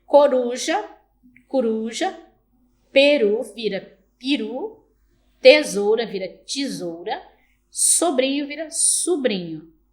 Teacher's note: elevação das vogais pré-tônicas por influência de uma vogal em sílaba subsequente